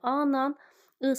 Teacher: Hər ikisi qalın dodaqlanmayan saitdir.